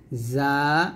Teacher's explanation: তালুতে লাগবে না জিমের জায়গা থেকে যা উচ্চারণ করা যাবে না যা টা জিহ্বাটা নিচে দাঁতের মাঝে লাগে উচ্চারণ করবেন